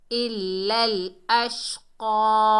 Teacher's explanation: قاف جو ہے حروف استعلا میں سے ہے، موٹا ادا ہوگا۔